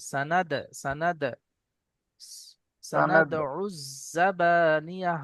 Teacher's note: দাল এসছে আর এর উপরে সাকিন এসছে তাই একটু কলকলা করে ঝাটকার সঙ্গে পড়তে হবে